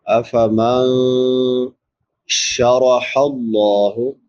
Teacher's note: چھوٹی حا ہے، حلق کے درمیان سے ادا ہوتی ہے جس کو وسط حلق کہتے ہیں